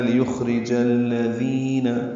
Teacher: لیخرج الذین، ذال نرمی سے ادا کریں گے. ذی یا مدہ ہے، 2 حرکات لمبا کریں گے.